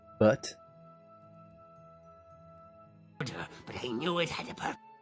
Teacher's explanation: a t sound, the tongue flicks off the roof of your mouth. So, but if he went but I knew, I wouldn't need that tongue flick.